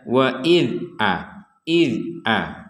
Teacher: huruf dal ini tidak dibaca dengan bunyi pantul. Tidak ada pantulan sama sekali untuk huruf dal.